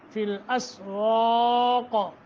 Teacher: مدہ یا ساکن ما قبل کسرہ، فی الاسواق واق کر کے واو قاف دونوں موٹے